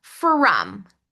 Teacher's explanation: That o is pronounced with a short /u/ sound, not the short /o/ sound.